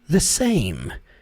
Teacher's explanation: Quando você for falar a palavra the, lembre-se que o som não é e, não é the same, não, é the. E o som do TH ali na ponta da língua é bem sutil, bem suave